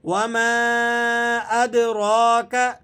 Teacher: یہ مد منفصل ہے، یعنی مد جائز ہے، اگر اسے کم بھی کھینچا جائے تب بھی درست ہے، لیکن بہتر یہ ہے کہ اسے 4 الف کے برابر کھینچ کر ادا کیا جائے۔ وما ادراک، دال پہ آپ نے قلقلہ ادا کرنا ہے اور را کو موٹا پڑھیں گے، اور را کو 1 الف کے برابر کھینچ کر بھی پڑھا جائے گا کیونکہ اس کے اوپر کھڑا زبر لگا ہوا ہے۔